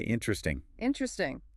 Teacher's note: The weak vowel, the schwa, just vanishes to speed things up. The word literally gets shorter.